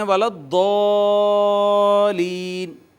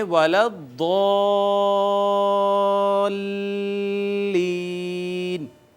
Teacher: جب ہم اوپر لے جائیں تو نیچے آنے سے پہلے تھوڑی دیر کے لیے الف کو لام کے ساتھ اٹیچ کریں گے تاکہ شد کا جو مقصد ہے وہ واضح ہو جائے